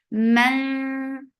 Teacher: This ikhfa is light, so keep your tongue straight